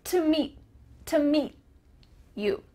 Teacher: your tongue is going to be at the top of your mouth, ready to make the T sound, but no air comes out. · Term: final T sound